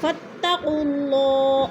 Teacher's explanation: درمیان والے جو 2 الف ہیں کیونکہ ان کے اوپر حرکت نہیں ہے تو یہ نہیں پڑھے جائیں گے، تو قاف کو اللہ سے ملا کر پڑھیں گے۔